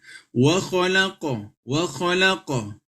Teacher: Q ini adalah huruf Qalqalah maka dipantulkan